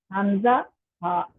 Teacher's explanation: और हमजा हा जो है वो इंतहाई हल्क से अदा हो रहे हैं। उर्दू में अगर मैं आसान वर्डिंग में बोलूँ तो पहला हिस्सा, शुरू का हिस्सा, दरमियान वाला और आखिरी हिस्सा हलक का जो है वहां से ये दो दो हरूफ अदा हो रहे हैं।